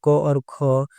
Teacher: कंठस्थ ध्वनि में क और ख आते हैं।